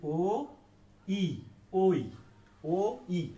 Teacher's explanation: ওই হচ্ছে কোনো মৌলিক ধ্বনি নয়, ওই হচ্ছে একটি দ্বিস্বর ধ্বনি